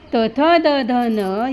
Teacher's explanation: त थ द ध न यांना दंतव्य म्हणतात, का उच्चार करताना जीभ दातांना लागते.